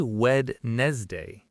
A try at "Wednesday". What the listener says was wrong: Yes, so many people say Wednesday, 3 syllables. But the correct pronunciation is actually Wednesday, just 2 syllables. The D in the middle is completely silent. It just doesn't exist when you say it.